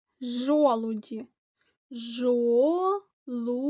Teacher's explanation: Олег намалював жолуді жолуді як бачимо це також три складове слово наголос падає на перший склад і останній приголосний дь м'який